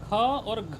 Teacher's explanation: अच्छा यह दिक्कत हो रही है आपको बोलिए क ख ग घ ठीक है देखिए दूसरा और चौथा दो और चार ये दोनों जो है आपका महाप्राण है क्या है महाप्राण महाप्राण ख और घ ये दोनों में ज्यादा हवा लगती है